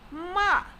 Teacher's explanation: Remember, the fourth tone is denoted by a. It is falling tone. It shares intonation with commands such as stop.